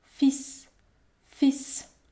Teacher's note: Dans le mot fils, je ne prononce pas la consonne L. Par contre, je vais prononcer la consonne S.